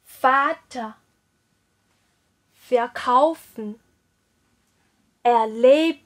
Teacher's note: 非重读前缀中我们的字母▁r▁要元音化，就是发啊这个音